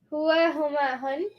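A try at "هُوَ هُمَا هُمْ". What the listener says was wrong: No N's. Only M's. Hua, huma, hum.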